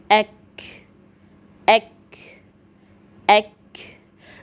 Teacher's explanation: La partie supérieure de la langue légèrement en dessous du point d'articulation du qaf, avec ce qui suit de la partie supérieure du palais, forme le point d'articulation de ek, ek, ek. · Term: le kaf